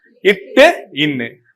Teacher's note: நாவோட நுனிப்பகுதியும் அது பிளஸ் மேல்வாயோட நுனிப்பகுதியும் தொடுவதால் உருவாகிறது.